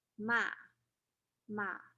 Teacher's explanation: higher pitch then drops and then goes up again ma and the fourth tone is starting at a higher pitch and then lowers dramatically and it's caught going down or the fourth tone ma ma